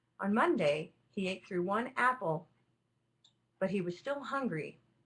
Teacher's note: with Apple I've used a neutral kind of markup here it's neither particularly rising or falling and it's not falling because the speaker is going to continue